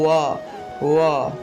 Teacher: অন্তস্থ বয়ের সংস্কৃত উচ্চারণ হলো ওয়া